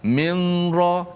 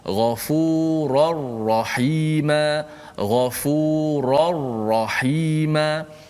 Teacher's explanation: Jangan ada unsur-unsur nun lagi. Kerana nun masuk secara total masuk dalam ra. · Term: idgham bila gunnah